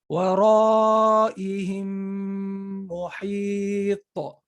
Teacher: i emphasize the meme as if there's a shadda and i extended my nasal sound